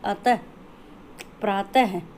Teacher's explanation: विसर्ग का उच्चारण हल्के है की तरह से हम करते हैं, एक छोटे से झटके के साथ किया जाता है